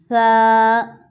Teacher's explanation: پہلی بات یہ کہ اس میں سیٹی کی آواز نہیں آئے گی